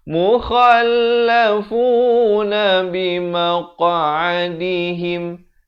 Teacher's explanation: Kha ni makhrajnya di hujung kerongkong.